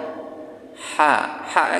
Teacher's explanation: Ha dari tengah tenggorokan, ha kecil yang ada perutnya, dari tengah tenggorokan